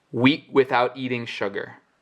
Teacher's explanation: Week appears right in the middle of a sentence without a comma, without a pause, and he does not say this K